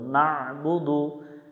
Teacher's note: অনেকজনে ভুল করে না বুদু পরে আইনটা উচ্চারণ করে না, আমরা গলা চেপে উচ্চারণ করব